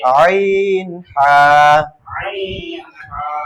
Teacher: দুই নম্বর মাখরাজ হলকের মধ্যখান হইতে